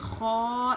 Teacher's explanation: اس میں تھوڑی سی کھردری آواز ہونی چاہیے ہلکی سی زیادہ نہیں.